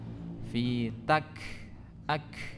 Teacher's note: huruf kaf ini kan tempat keluarnya adalah di pangkal lidah bertemu dengan langit-langit yang keras